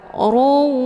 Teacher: harokat tanwin summa dileburkan ataupun dimasukkan ke dalam huruf waw dengan cara ditekan kemudian ditahan lebih kurang 2 kali ketukan. Ruwa, ya, jadi ditahan dulu. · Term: idgham bi gunnah